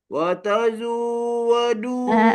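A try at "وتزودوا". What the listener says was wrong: Okey jangan zu lagi. Zai baris atas bunyi za watazau tahan.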